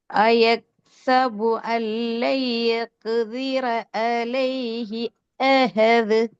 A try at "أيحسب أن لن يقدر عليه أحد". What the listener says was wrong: போதாது, என்ன வரணும்? அஹது. அந்த சவுண்ட் தேவை. அதான் கலக்குதல்ன்றது அர்த்தம். அல்லது நாங்க வாயால மட்டும்தான் கலக்கணும், கலக்கி ஓதணும் என்று சொல்லும். ஆனா எங்களோட வாய் அது உண்மையில கலக்காது, அழுத்தம் கொடுத்து ஓதாது. அது போல அஹது அஹது.